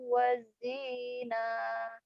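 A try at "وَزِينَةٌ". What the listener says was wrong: Pendek. Wazinah. Kenapa panjang? Kan setelah matobinya ada 2 huruf. Yang panjang itu kalau setelah matobi 1.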